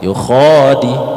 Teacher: Kho-nya kepanjangan, jangan panjangnya. Kho-nya cuma 2 harokat ya